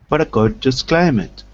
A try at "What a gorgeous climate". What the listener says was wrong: Very good. Excellent. I could hear your voice going up this time.